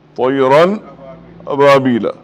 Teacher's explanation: یہاں غنہ نہیں کرنا ہے. نون کی آواز بھی نہیں آنا. تنوین کی بھی. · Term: اظہار